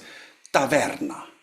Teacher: when we pronounce them the tongue is nicely resting on the teeth but not as in English or German or Italian or others. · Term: dentals